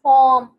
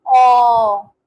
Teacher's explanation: ओ long vowel again, between half open and open, back of the tongue इसमें raise होती है, between one open and close lip rounding, और ये open and close lip rounding के दरमियान position of the lip होती है।